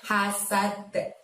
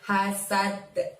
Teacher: Lalu di depan ida ada lafadz hasad. Hasadnya dalnya disukunkan atau terjadi waqaf maka terjadilah qalqalah kubro dan harus kita mantulkan ya